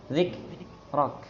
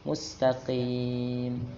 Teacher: Kalau tempo sama, cuman aliran suaranya beda. Kalau kaf langsung terputus. Sin dia aliran suaranya full.